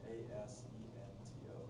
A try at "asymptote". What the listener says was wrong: No, asymptote. No, it's asym. Well, you pronounce the M like an M, not an N. So it's asymptote.